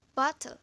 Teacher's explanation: syllable kedua adalah weak syllable yang hanya berisi konsonan saja, yaitu konsonan teh dan leh, sehingga syllable kedua dalam kata bottle disebut syllabic consonant.